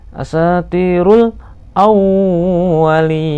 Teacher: wa-nya ditahan, ditekan maksudnya karena tasdid